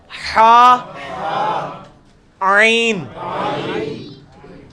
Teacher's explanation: وسط حلق سے نکلے گا